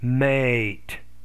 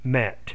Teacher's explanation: you need to make the first vowel longer